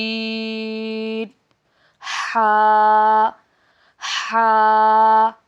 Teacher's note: حلق کے درمیان والے حصے سے ادا ہوتے ہیں، عین اور ہا